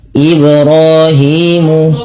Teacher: Tidak dibaca dengan memutus huruf bnya misalkan ibrahi dengan menambahkan hamzah. Tidak. Tapi dia mengalir saja untuk qalqalahnya.